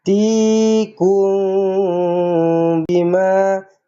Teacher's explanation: mim kosong bertemu dengan ba ikhfa syafawi dengungkan dengan dua harakat